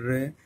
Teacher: जब हम र का उच्चारण करते हैं र, तो आपने देखा कि जो जीभ है हमारी वो कंपन करती है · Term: परकंपित